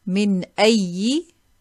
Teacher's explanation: we have a noon as-saakinah followed by a hamza. So we'll say this clearly.